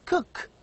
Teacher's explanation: Cook begins with k, velar sound, and also cook ends with k, a velar sound. K is a voiceless sound. It has no vibration.